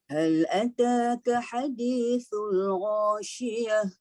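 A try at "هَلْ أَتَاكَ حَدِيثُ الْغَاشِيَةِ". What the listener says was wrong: Okey, pada ha di situ dilembutkan sikit lagi.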